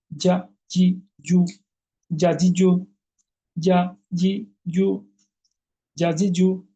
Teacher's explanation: জিহ্বার মাঝখানটা তালুর সঙ্গে লাগিয়ে। কিভাবে? পাতলা মজবুত ও পার্শ্বমুখী কলকলা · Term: জিম